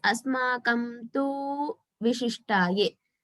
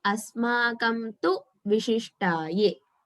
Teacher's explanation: That tu is short, so we should not lengthen it.